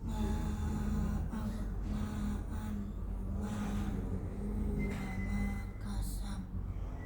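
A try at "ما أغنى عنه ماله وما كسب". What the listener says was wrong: Itu langsung pantulannya jangan ada space. Ma aghna anhu maluhu wa ma kasab.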